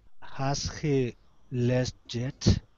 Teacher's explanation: When a word ending with a T is followed by a word beginning with the Y sound, like yet, the T and the Y sound are pronounced like a Ch. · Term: Ch sound